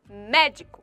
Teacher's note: É chamada de proparoxítona, pois a sílaba mais forte encontra-se na antepenúltima sílaba.